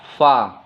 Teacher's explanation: bibir bawah bertemu dengan ujung gigi atas